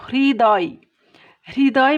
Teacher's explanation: হয়ের সাথে যদি রিকার যোগ হয়, মানে হয়ে রিকার যোগ হয় তাহলে তার উচ্চারণটা হয় ইংরেজি HRI, হ্রির মতো। যেমন দেখো, হৃদয়, হৃদয় বানানের হয়ের সাথে একটা রিকার যোগ হয়েছে, তাহলে এইটা যখন আমরা উচ্চারণ নির্দেশ করব, উচ্চারণের বানান লিখব, তখন আমরা এভাবে লিখতে পারি HRI, দ অন্তস্থ হৃদয়, অথবা এভাবেও লিখতে পারি হৃদয়।